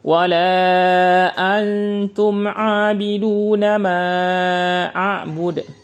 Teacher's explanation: Jadi suara nun sukunnya yang disamarkan, bukan suara tanya.